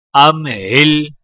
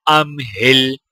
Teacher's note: زیر ہل ام ہل حمزہ کو میم کے ساتھ ملاتے ہوئے غنہ نہیں کیا جائے گا کیونکہ میم کے آگے حروف ہلکی ہا ہے